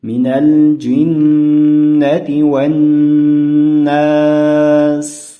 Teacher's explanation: Mana bu joyda n harflarini yaxshilab g'unna qilib o'qishimiz kerak bo'ladi ekan.